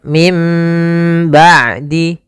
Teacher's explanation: juga ada Mad thai'i Mad Thobi'i Kemudian pada lafal mim ba'di ada nun sukun bertemu dengan ba maka ini kita namakan dengan iqlab iqlab yaitu membalikkan suara Nun menjadi suara mim maka di sini ditandai dengan ditanda di huruf mim atasnya di